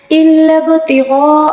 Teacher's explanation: با کے اوپر ساکن ہے، اس میں قلقلہ ہوگا. قلقلہ کے 5 ایسے حروف ہیں جس پر ساکن آ جائے اس میں قلقلہ ہوتا ہے.